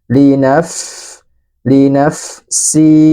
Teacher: keluarkan suara angin huruf fa-nya